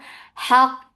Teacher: ha from middle part of your throat